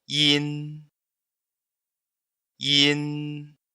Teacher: É um som nasal fraco. A boca abre muito pouco, quase nada. E no final, a ponta da língua pode tocar o céu da boca para dar esse final em N. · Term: Som nasal frontal